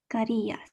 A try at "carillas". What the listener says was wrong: Perfect, great job.